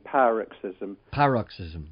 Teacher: the accent is on the first vowel, the long vowel at the beginning